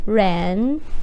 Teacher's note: so the Ren is in a second tone it's going up